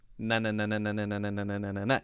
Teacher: there's actually no air coming out of your mouth · But the tongue, it's the front of the mouth. The tongue is coming up behind the teeth, not touching the teeth, to the front of the mouth on the roof. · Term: N sound